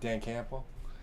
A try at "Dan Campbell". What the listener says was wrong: the P in there. Campbell. He goes Campbell.